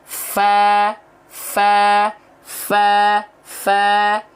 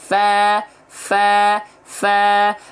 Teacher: Ujung gigi seri atas kita menyentuh dengan badan atau perut bibir bawah. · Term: huruf fa